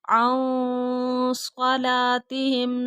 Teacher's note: سواد آ رہا ہے تو یہاں پہ اخفا ہوگا